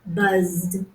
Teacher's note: because the vocal cords vibrate, they're voiced, when we say the z consonant sound